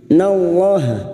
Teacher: lam jalalah yang didahului fathah kita baca tafkim